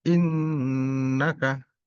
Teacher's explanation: innaka disebut gunnah musyaddadah. Bacanya bisa dua atau tiga harakat.